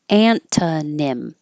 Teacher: This T stays a T because it can be part of the first syllable.